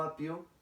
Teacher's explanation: Cuando digo apio, en la sílaba pio se pronuncian los dos sonidos vocálicos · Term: diptongo